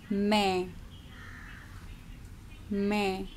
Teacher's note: that n at the end is only half pronounced it is a nasal sound